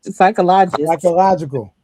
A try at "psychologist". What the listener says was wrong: No, it's not logical, but psychologist.